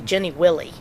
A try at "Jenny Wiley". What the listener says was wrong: There's one L, Wiley, Wiley. If there were two L's, it'd be Willie.